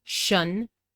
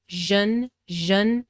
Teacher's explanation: tion, which is pronounced with a voiceless sh sound, shun, and sion, which is usually pronounced with a voiced zh sound, zhun, zhun, but there are exceptions, of course.